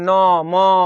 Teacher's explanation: प्रत्येक वर्ग का अंतिम वर्ण जो है, इसी का उच्चारण जो है नासिका से होता है, नकिया करके